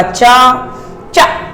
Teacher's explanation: जैसे आपने चा बोला तो पहले स्पर्श किया, फिर लास्ट में उसने संघर्ष किया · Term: स्पर्श संघर्षी व्यंजन